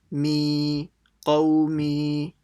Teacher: So mim will be stretched by the ya sakin. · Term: madd al-asli